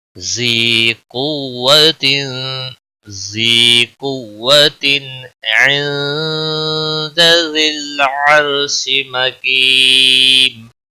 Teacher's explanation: قوت قاف حروف مستعلیہ میں سے پر پڑھا جائے گا